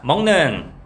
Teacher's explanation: 지금 기역 같은 경우에는 이제 파열음이고 입에서 나는 소리야. 근데 니은 같은 경우에는 비음, 코에서 나는 소리란 말이야.